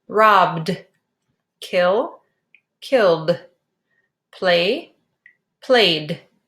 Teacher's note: pronounce the ending sound as D after voiced sounds